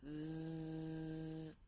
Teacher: Can you feel your throat moving up and down or vibrating? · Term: voiced sound